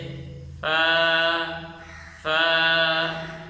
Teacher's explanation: فا کی صحیح ادائیگی یہ ہے ثنایا علیہ کے کنارہ نچلے ہونٹ کے اندر والے حصے میں لگا کر نرمی سے ادا کریں گے کہ آخر میں حمزہ ہا کی آواز بھی نہ آئے اور جھٹکا بھی نہ لگے، ایک الف سے زائد لمبا بھی نہ ہو، جیسے فا فا۔